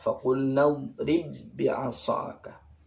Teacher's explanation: Qalqalah pada ba-nya ini hilang. Langsung diidghamkan. Enggak boleh dipantulkan, langsung masuk pada huruf ba yang kedua. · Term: idgham mutamatsilain